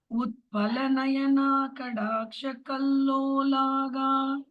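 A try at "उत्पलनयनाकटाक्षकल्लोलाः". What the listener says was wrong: கடா இல்ல கட்டா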